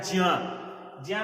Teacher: क्योंकि अब जो ज्ञा को, जिसको हम लोग ज्ञा पढ़ते हैं, तो ज्ञा ना पढ़कर उसको ज्या पढ़ा जाता है।